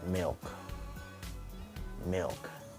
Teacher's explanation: In a dark lateral, the dark lateral usually start when the L is appear behind the consonants or other type of consonants, such as milk, milk. So usually in dark lateral, the enunciation of the L doesn't pronounce very clearly and it's very different from the light lateral